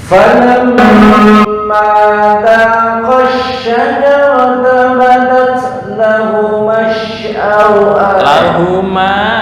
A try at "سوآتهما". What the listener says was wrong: Sawatuhuma. Sin biasa. ini sin kecil ya. Sau'a. Ya, sawatuhuma. Bukan sya tapi sa.